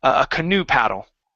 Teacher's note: this word is pronounced canoe. The stress is on the end of a word